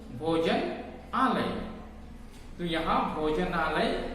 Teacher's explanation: न का जो उच्चारण है वह अंत में अ के साथ समाप्त होता है और यहां आलय में आ के साथ आरंभ होता है। तो ये दोनों मिलकर आ उच्चारण बनते हैं।